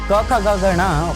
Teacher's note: क ख ग घ ङ कंठव्य कहे गए क्योंकि इनके उच्चारण के समय ध्वनि कंठ से निकलती है।